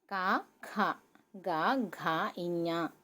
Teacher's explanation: ఈ 5 లెటర్స్కి స్థానం ఏంటంటే కంఠ్యస్పర్శ, కంఠం నుంచి ఇవి రిలేట్ అయి ఉంటాయండి